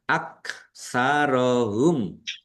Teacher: Mim sukun bertemu dengan huruf lam. Bacaan izhar syafawi dibaca jelas.